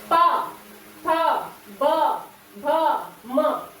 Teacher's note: ओठ से। दोनों ओठ एक दूसरे से मिलते हैं।